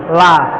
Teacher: Lam itu keluarnya dengan menggerakkan semua lidah dan bertemu dengan ujung langit-langit mulut. Jadi lam itu posisi ujung lidah ada di langit-langit mulut yang depan di belakang gigi. La. Jadi kalau gambar itu ini ujung langit-langit, lidah kita nempel di sini.